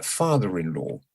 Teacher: in father-in-law there's only one accent on the first syllable